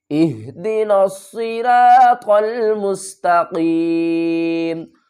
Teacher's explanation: زبر تا، مستا قاف یا زیر قی، میم زبر ما، مستقیم، وقف کی صورت میں میم کو ساکن پڑھیں گے